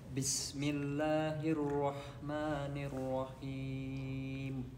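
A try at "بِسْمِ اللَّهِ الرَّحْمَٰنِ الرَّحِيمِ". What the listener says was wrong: Good, but there's no istifala. You said bis, and it is B, not bis. B. And the scene has hems. You see, it has hems, and also and hems.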